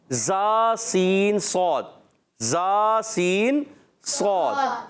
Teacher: زبان کی بالکل باریک نوک اور نیچے اور اوپر کے دانتوں کے اندرونی کنارے زا سین صاد ادا ہوتے ہیں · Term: سی ٹی والے حروف